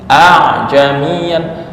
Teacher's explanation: makhraj ain itu di mana? Tengah tenggorokan.